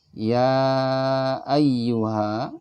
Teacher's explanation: Ya ayyuha, ya itu 5 ketukan.